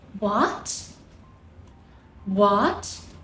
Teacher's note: The second tone is a rising tone, from a low point to a high point